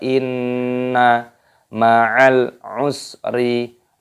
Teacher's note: Nun tasydid hukumnya dibaca gunnah. Gunnah itu artinya berdengung. Cara mengucapkannya pun didengungkan